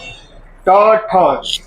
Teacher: ट ठ ड ढ ये जो है इसमें जीभ उल्टा जाके ऊपर सटेगा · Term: मूर्धा